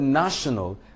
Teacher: the word national cannot be stressed on the second syllable, neither can it be stressed on the last syllable. So which means we are left with placing the stress on the first syllable.